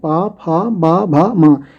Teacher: इनमें वर्णों को जब उच्चारित करेंगे तो दोनों होठ आपस में स्पर्श करेंगे। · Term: पा वर्ग